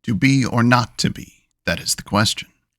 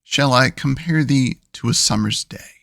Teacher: the spoken pattern for each is unstressed then stressed